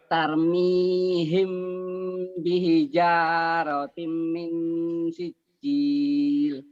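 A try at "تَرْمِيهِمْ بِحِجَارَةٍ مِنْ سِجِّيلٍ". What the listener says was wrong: Himnya ada engnya ya Pak tuh.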